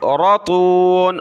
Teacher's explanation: را اور تا کو موٹا کیا